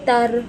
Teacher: یاد رکھیں رو کو موٹا کرنے کے چکر میں تا کی آواز تو میں کنورٹ نہ ہو جائے. تا کو باریک ادا کریں گے اور رو کو موٹا ادا کریں گے